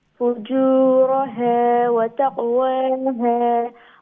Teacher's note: stretch the ha one alif long